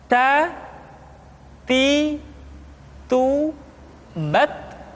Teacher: huruf Ta ketika diucapkan terdengar ada nafas yang mengalir, atau dalam ilmu tajwid disebut dengan sifat al-hamas.